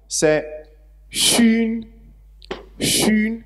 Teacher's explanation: Donc, c'est une fricative palatalisée.